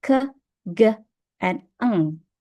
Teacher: next is velar, or tongue against the velum, such as when you say k, g, and ng.